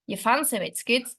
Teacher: the nuclear stress is placed on the word fancy